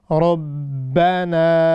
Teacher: را کو موٹا کرنا ہے، با کو نہیں کرنا۔ ہمیشہ ہوتا ہے ربو، بو نہیں ہوگا، با۔ · ربنا، را، پھر وہی را از آلسو ہیوی بیکاز یہ ہاز فتحہ ہونے، را پر فتحہ ہے اسی لیے یہ را ہم ہیوی پڑھیں گے۔ را، ربنا، یہاں پر یہ بات توجہ طلب ہے کہ را کو موٹا کرنا ہے، با کو نہیں کرنا۔